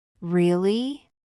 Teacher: A really simple one is really with a rising tone. It shows surprise or interest.